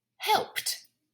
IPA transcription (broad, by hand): hɛlpt